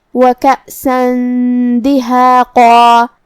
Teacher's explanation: دال حروف الاخفاء میں سے ہے اور اخفاء کا معنی ہے چھپا دینا تو ہم یہاں تنوین کو چھپاتے ہوئے لیکن غنہ کے ساتھ یہ حکم کو ادا کریں گے